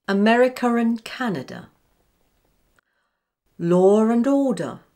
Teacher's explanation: Now let's look at intrusive R in British received pronunciation. This is the R sound an English speaker might place between two words where the first ends in a schwa or or, and the following word begins with a vowel sound.